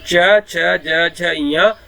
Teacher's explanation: च, छ, ज, झ, य, इसका उच्चारण करने के लिए हमको तालु की जरूरत पड़ती है।